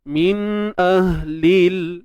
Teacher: Tum min, nun mati bertemu hamzah. Jadi bila nun mati bertemu hamzah ni izhar. Izhar halqi.